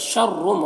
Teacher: तनवीन के बाद मीम है तो तनवीन को मीम से मिलाकर गुन्ना के साथ में पढ़ेंगे।